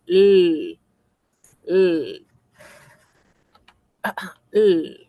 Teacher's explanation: La L al menos se coloca entre eh los alveolos, esas rayitas, esas eh costillitas que tenemos en la boca arriba.